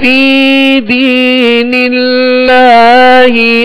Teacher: باریک کیوں پڑھیں گے؟ اس لیے کہ اللہ عز و جل کے لام سے پہلے زیر ہے